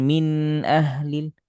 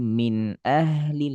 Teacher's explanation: ha harus lebih panjang dari nun karena nun setengah. H sempurna.